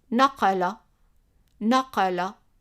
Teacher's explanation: Remember, the Q represents the kaaf, which is like a Q pronounced in the back of the throat